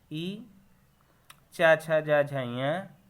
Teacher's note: ये तालु से बोले जाते हैं। इनका उच्चारण स्थान तालु है।